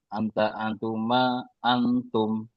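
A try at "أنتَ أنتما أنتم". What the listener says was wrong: terus nggak usah pakai ini ya, nggak usah pakai dengung ya, nggak usah pakai ikhfa.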